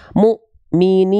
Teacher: menambahkan Hamzah sukun karena Hamzah sukun itu punya sifat namanya syiddah huruf-huruf yang bertemu dengan Hamzah sukun itu dia akan terhenti terhentak